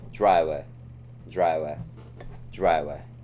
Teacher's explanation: The schwa unstressed syllables at the end of words often turn into a relaxed R sound.